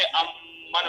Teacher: یہ جو میم کا جو مخرج ہے وہ شفتین سے ہے، اس لیے اس کو ادغام شفوی کہتے ہیں.